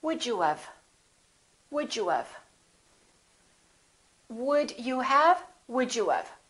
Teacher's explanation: we basically do this also we say would you of